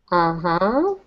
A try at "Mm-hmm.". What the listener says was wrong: Actually, it's mm-hmm. You have to have your mouth closed.